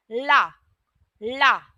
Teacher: जब हम ला का उच्चारण करते हैं तो जो हमारी जीव है वह पीछे पलट है ठीक है तो ला को हम कहते हैं पार्श्विक व्यंजन ठीक